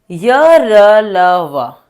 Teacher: बोलते वक्त आपको गले में कंपन महसूस हो रहा है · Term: अंत स्तर